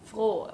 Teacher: froh with a long stretched o-sound